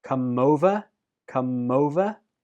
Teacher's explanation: Come and over link. Come over. Come over. Over is also stressed.